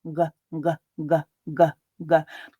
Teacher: So starting with a g, very much in my soft palate with the very back of my tongue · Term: g sound